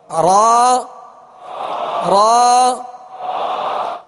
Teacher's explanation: یہ پشت زبان قریب سرا زبان، اوپر کے کھردرے تالو سے، آپ کے اوپر کے سامنے والے جو دانت ہیں ثنایا علیا کہلاتے ہیں، اس کی جڑ سے آپ اوپر تالو کی طرف انگلی لگائیں گے تو آپ کو کھردرا تالو محسوس ہوگا. تو پشت زبان قریب سرا زبان کھردرے تالو سے جب لگے تو را ادا ہوتی ہے، اور اس میں خود بخود مشابہت تکرار بھی پیدا ہوگی اور را صحیح درستی کے ساتھ ادا ہوگی.